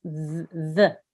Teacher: it's a th sound, not a z sound. There's no z, there's no buzzing sound here.